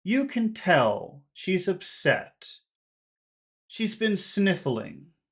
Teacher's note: we have these three phrases that start high and they finish low